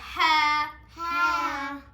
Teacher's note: حلق کے درمیان والے حصے سے ہا ادا ہوتا ہے